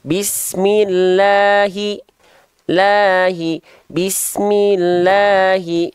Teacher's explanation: hati-hati La dan maanya jangan sampai Kepanjangan dua harakat saja